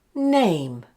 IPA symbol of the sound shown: eɪ